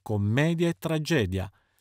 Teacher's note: commedia e tragedia sono entrambe parole piane dunque accento sulla penultima